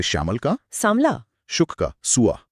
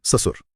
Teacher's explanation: तत्सम में अक्सर श मतलब तालव्य श का प्रयोग होता है और वो तद्भव में स यानी दंत्य स बन जाता है